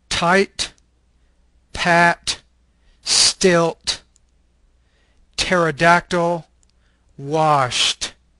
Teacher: This is an alveolar stop voiceless consonant.